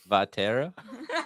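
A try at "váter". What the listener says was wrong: No, there's no A at the end.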